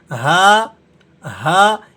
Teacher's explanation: हलक के उस हिस्से से अदा होता है जो हमारे सीने के साथ मिला हुआ है। इसलिए इसकी ज्यादा आवाज आपको सीने से निकलती हुई महसूस होगी। है तो यह हुरूफ हलकी में से लेकिन हलक के उस हिस्से से अदा होता है जो सीने के साथ जुड़ा हुआ है। · اور یہ حلق کے اس حصے سے ادا ہوتا ہے جو ہمارے سینے کے ساتھ ملا ہوا ہے، اس لیے اس کی زیادہ آواز آپ کو سینے سے نکلتی ہوئی محسوس ہوگی۔ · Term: حروف حلقی